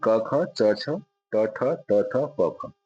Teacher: प्रत्येक वर्ग का पहला और दूसरा जो है अघोष कहलाते हैं।